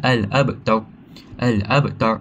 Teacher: Dan akhir sekali terdapat juga ra tafkhim, iaitu huruf ra yang berharakat dhammah di akhir ayat waqaf, yang tu dibaca dengan al-abtar. Al-abtar, ra dibaca dengan tebal, tafkhim